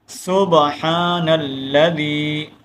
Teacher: یہاں دیکھیں با ہے اور یہ با ساکن ہے اور اس کے اوپر ہم کلکلا کریں گے۔ با کو ہلانا ہے، کلکلے کا مطلب ہوتا ہے ہلانا۔